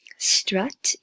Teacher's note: it's a little bit longer but a very similar sound to the schwa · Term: short u sound